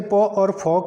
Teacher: प और फ हमारे पास क्या हो गया वो अघोष वर्ण हो गया